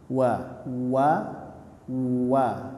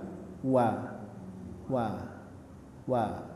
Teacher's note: huruf wau sama seperti membaca harakat damah yaitu memancungkan bibir Ya wa wa wa dipancungkan dulu baru disebutkan wa wa wa